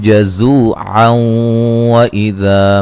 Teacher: ملانے کی صورت میں نون تنوین کا ادغام ہوگا مع الغنہ